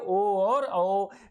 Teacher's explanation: कंठ भी लगे और ओष्ठ भी लगे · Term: कंठोष्